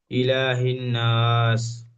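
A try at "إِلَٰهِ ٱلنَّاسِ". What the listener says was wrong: ইলাহিন, হাটা নুনের সাথে যুক্ত করছেন, এখানে নুন তাজদিদ খালি গুণনা করতে হবে, গুণনাটি হয় না। ইলাহিন নাস, বলেন। হ্যাঁ, ঠিক এমন, যেখানে গুণনা হবে সেখানে গুণনা করবেন, যেখানে একালিফের টান সেখানে একালিফ টান দেবেন।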